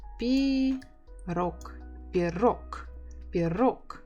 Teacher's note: So stress on the second syllable.